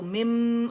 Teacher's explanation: نون کا میم میں ادغام ہو گیا، ادغام تام بالغنہ جسے کہتے ہیں، کمپلیٹ مرجنگ ود غنہ